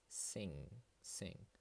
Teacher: there is no G sound that I say and there is no G sound that I write yeah so